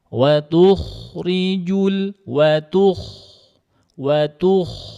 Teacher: naikkan lidahnya tebal kh sukun sebelumnya domah tebalkan